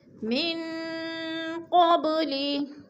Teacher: نون ساکن کے بعد قاف حروف اخفا میں سے ہے تو ادھر اخفا کریں گے، ناک میں آواز کو چھپا کر پڑھیں گے